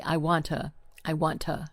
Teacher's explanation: For example, the word to, t o, often becomes tuh. So, we don't fully pronounce that oo sound.